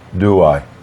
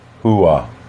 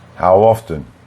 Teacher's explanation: the speaker adds a consonant in the first word at the end, and the sound is w or y. But it's not a full sound. It's not a full w or y. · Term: vowel to vowel linking